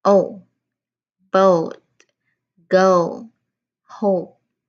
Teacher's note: This is another gliding sound because it's another dip thong. It starts um open and then it closes a bit.